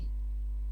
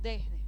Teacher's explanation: con la d se suaviza se leniza no ponemos una d pronunciada completa sino que la hacemos más suave por influjo por asimilación de la s que la vamos aspirando